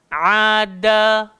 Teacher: Tak gigit. Hujung lidah, langgar belakang gigi atas. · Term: huruf dal